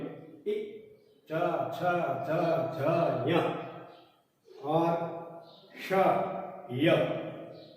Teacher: जबान अपनी तालु से स्पर्श करती है, इसलिए तालु है। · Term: तालव्य